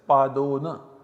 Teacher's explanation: Pada is a quarter, un is less. So we have a followed by u in a compound. In place of both of them, we have o as the substitute. So we have pad, o and n, that is padona, 1/4 less to the hour.